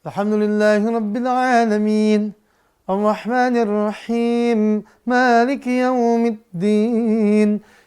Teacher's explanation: Min, him, ain, ya itu semuanya mad arid tuh. Ya, panjang 2 sampai 6 harokat.